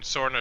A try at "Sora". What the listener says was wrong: Sora. Yeah, there's no end.